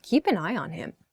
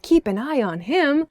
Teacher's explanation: if you say it with an upward intonation, kind of happy